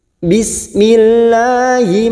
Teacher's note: lam jalalah yang sebelumnya ada kasroh kita baca tarkik atau tipis